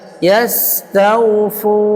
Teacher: Sin safir. Berdesis seperti ular.